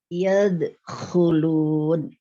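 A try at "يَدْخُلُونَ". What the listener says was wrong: Diulang, dalnya usahakan tipis. Coba lagi. Dalnya, iya. Jadi tadi itu kayaknya mau siap-siap ke kho, jadi dalnya ikutan agak naik sedikit. Nah, itu jangan.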